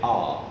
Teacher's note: it is long it is low or open and it is back